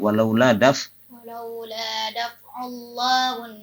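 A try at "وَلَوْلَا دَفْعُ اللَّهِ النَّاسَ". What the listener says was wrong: Nah, kenapa daf'ullahun? Harusnya walaula daf'ullahin. Bawahnya tadi ya itu juga salah ya. Walaula daf'ullahin nasa, janganlah ullahun ya.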